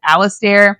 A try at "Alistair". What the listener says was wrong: No one says Alistair, like going up the stairs.